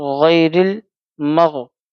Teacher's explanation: یالین کو ہم نرمی کے ساتھ جلدی پڑھیں گے